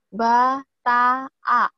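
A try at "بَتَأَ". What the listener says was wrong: Oh, sebentar, baknya jangan dikasih H, lagi coba terangin, kosarin ya. Ba, langsung.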